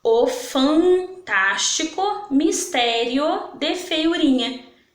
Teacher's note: quando eu falei a palavra fantástico saiu um solzinho aqui pelo meu nariz então ela tem a vogal nasal